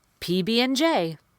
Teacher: and because of the way I'm connecting I'm saying hmm and I'm completely skipping the D